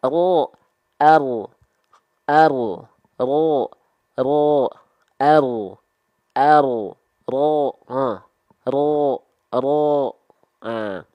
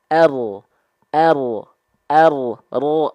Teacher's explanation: Bergetarnya nggak terlampau berlebihan karena kan takrir.